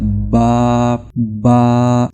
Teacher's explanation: बा की आवाज होठों के अंदरूनी हिस्से को आपस में यानी जो तर हिस्सा होता है इनको आपस में मिलाने से आता होता है